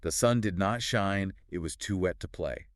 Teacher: two unstressed syllables followed by a stressed syllable